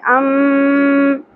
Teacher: غنہ کرنا ہے میم مشدد پہ ٹھیک ہے اس اواز کو ہم نے ناک میں ٹھہرانا ہے